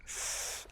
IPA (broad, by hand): θ